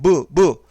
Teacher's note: 입술을 가장 많이 움직인다는 걸 확인할 수 있고요